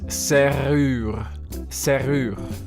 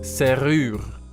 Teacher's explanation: you also have the usual French R, which is r, coming straight from the throat